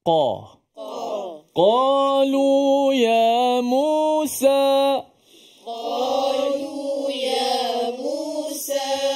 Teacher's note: qo Q Q lihat bagaimana saya membuka mulut untuk baris atas huruf yang tebal qaf yang makhrajnya berada di mana ya di Pangkal pangkal lidah